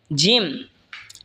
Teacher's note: জিম জিহ্বার মধ্যখান তার বরাবর ওপরে তালের সঙ্গে লাগা উচ্চারণ হবে জিম।